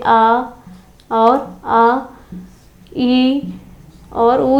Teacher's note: जो अनुनासिक नहीं होंगे, निरनुनासिक होंगे, केवल मुख से ही उच्चारित होंगे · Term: मौखिक